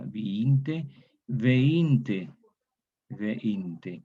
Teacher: Entonces, aquí se produce un fenómeno de disimilación. Como hay dos vocales I, una de ellas cambia en E. Disimilación, diferenciadora, viinte, veinte, veinte.